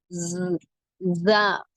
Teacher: நுனினாவின் மேல் பகுதி மேல் கீழ் பற்களின் இடையில் இணையும் போது உண்டாகிறது